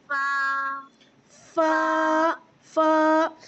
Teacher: ऊपर वाले टीथ नीचे वाले लिप में जाके लगेंगे